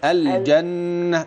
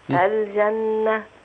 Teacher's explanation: النون دي بقى فيها غنة واضحة جامدة كده